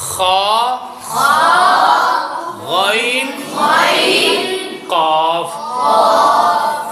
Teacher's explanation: صرف زبان کی جڑ اوپر کو اٹھتی ہے اور سنگل موٹے ہوتے ہیں